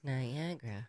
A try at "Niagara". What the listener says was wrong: So why are you not saying the A between the G and the R?